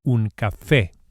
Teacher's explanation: we emphasize the e vowel on account of the accent, which indicates the stress, the strong syllable, un café, and not café.